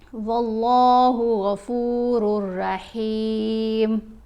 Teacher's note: ये जो लफ्ज़ अल्लाह है इसकी लाम को हमने मोटा पढ़ना है